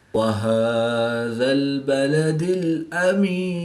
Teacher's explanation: کھڑی زبر ہے تو اس کو ایک الف یعنی 2 حرکات کے برابر کھینچ کر پڑھیں گے